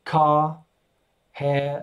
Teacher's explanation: just cut out the r